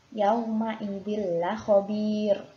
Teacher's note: Ya, di sini huruf ro juga yang terakhir ini, huruf terakhir ini ada huruf ro karena waqaf. Sebelumnya ada ya sukun. Maka huruf ro-nya juga dibaca tarkik atau tipis.